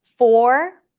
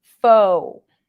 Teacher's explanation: some people might pronounce the r as a w sound or is an oo sound